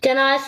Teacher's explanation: A ə yanaşı işlənən sait qoşalığı olan sözlərdə a səsi uzun tələffüz olunur. Bax a-ı uzun tələffüz olunur.